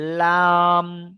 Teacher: দুই সামনের দুই সাইডে দাঁতের গড়ার সাথে জীবের আগা জীবের এক কিনারা লাগছে